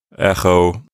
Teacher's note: notice that I'm saying sort of a ch sound in the back of my mouth. Not too rough, but just a gentle sound, like echo. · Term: chi